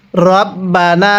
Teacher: এক আলিফ টান দিব, জবরের পরে খালি আলিফ, এক আলিফ টানতে হয়।